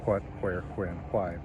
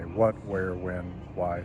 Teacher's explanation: speakers have generally moved hua to just wa. So your typical person since the mid-20th century learning English has learned to say what, where, when, why.